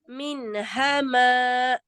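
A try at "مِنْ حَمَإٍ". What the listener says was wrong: Hati-hati, ada tawalud ya. Min. Min hama.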